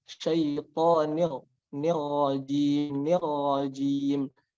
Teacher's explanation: Dan ro juga itu ada sifat yang namanya takrir, yaitu getaran. Jadi huruf ro itu ada getarannya, dan getarannya itu tidak boleh lebih dari 1 kali.